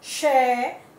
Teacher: शय तालव्य की तरह बोला जाता है